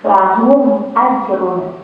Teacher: Jadi tidak perlu ada dengungnya di hidungnya, dibacanya langsung aja, dibacanya jelas, mimnya dibacanya jelas tanpa dengung, lahum ajrun, seperti itu ya. · Huruf hamzah kan berarti hurufnya selain dan ba ya, maka dibaca izhar syafawi ya. Dibacanya mimnya ini, sukunnya ini dibaca jelas dengan bibir tertutup ya.